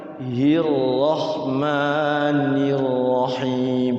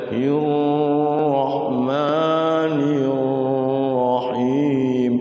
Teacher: Jadi ra itu gerakannya hanya sekali atau 2 kali.